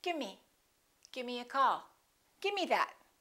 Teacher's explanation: instead of the V they just drop the V